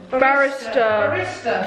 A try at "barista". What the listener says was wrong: I think it's barista. You're saying barista, like a barrister in a... I think it's barista. Barista.